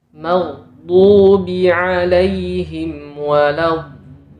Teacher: Yang benar huruf mim harus tipis bagaimana sifat asalnya.